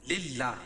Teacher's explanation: اللہ کے نام سے پہلے زیر ہے تو اللہ کا نام باریک پڑھا جائے گا